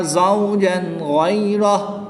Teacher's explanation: 2 زبر کی تنوین کے بعد غین حروف حلقی میں سے ہے تو یہاں پر اظہار ہوگا، یعنی تنوین کو خوب ظاہر کریں گے. یا ساکن سے پہلے حرف پر زبر ہے تو یہاں پر یا لین ہوگا، بغیر کھینچے اس کو پڑھیں گے.